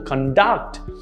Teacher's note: notice how the stress is in the second syllable